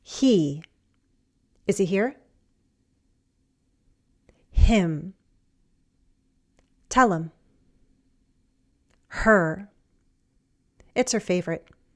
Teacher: we can drop the H in these function words.